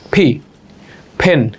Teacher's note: ফি, এতদিন যাকে আমরা পি পড়তাম, আজকে থেকে এর উচ্চারণ হবে ফি। দুই লিপ এক করে বাতাস সাউন্ড ধাক্কা দিয়ে বের হবে, লাইক ফি, ফেন।